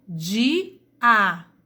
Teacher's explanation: na palavra dia eu tenho duas vogais, porque o I tem som aberto e o A também. Portanto, tendo sons abertos, eu terei duas vogais.